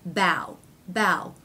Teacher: the aw vowel changes to the ow diphthong